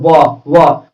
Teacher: फिर कहता है वकारस्य दंतोष्टम मतलब व का उच्चारण स्थान दांत और ओठ होता है। बोले व ओठ भी सटेगा, दांत भी सटेगा, दांत भी मतलब झंझनाएगा।